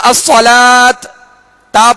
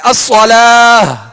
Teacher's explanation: آخر میں ہا کی آواز نکالیں گے، ہائے ساکنہ کی آواز نکالیں گے، یہ گول تا کے لیے۔